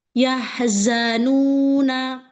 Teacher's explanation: Nanya jangan pakai hamzah, sayang.